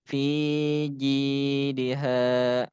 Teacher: Fi dia dibaca panjang. Ji juga dibaca panjang. Ha dibaca panjang.